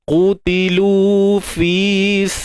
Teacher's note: lafdzul jalalah kita baca nipis sebab sebelumnya terdapat baris bawah